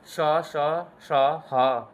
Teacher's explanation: ऊष्म व्यंजन है। जहां पे गर्म हवा निकलती है ऊष्म